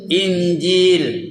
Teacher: Ada nun mati jumpa jil. Apa buat? Dengung.